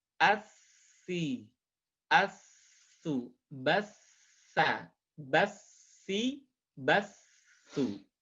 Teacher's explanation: Ujung lisan sekali lagi nyentuh dengan dinding dua gigi seri bagian atas, kemudian berikan sifat al-hamas. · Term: huruf sa